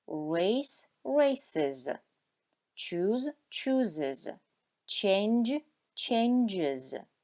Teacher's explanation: entonces la S final se pronuncia como is